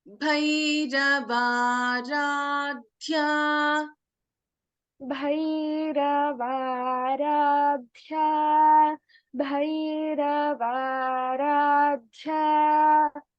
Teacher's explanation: So in Martanda Bhairavaradhya, we have Mahaprana Bha and Mahaprana Dha.